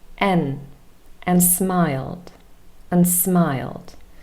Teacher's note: The connector and also loses its final consonant d